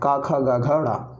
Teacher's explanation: तो घा जो है आपका का वर्ग में आता है और का वर्ग जो है किससे रिलेटेड है, आपका कंठ से रिलेटेड है, ठीक है। का वर्ग का उच्चारण स्थान क्या है, कंठ है